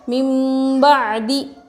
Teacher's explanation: نون ساکن کے بعد با آئے تو نون کو میم سے بدل کر غنہ اور اخفا کے ساتھ پڑھیں گے